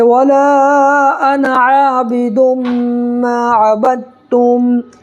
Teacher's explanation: ہے یہاں پر جو با ہے یہ دال نہیں پڑھیں گے، ڈائریکٹ جو ہے با کو تا میں ملانا ہے، اس لیے کہ تشدید ہے